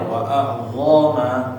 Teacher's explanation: Kayak misalnya tadi bagian akhir tajiduhu indallahi huwa khairan wa a'zama, dhoma pendek, seharusnya jangan dipanjangin dho-nya